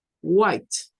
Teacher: van a escuchar ustedes que hacen el sonido de la H antes de la W y hacen algo como respirar así White como que aspiraran aire